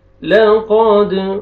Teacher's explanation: क़ाफ को मोटा करके पढ़ेंगे और दाल क़लक़ला डबल साउंड आएगा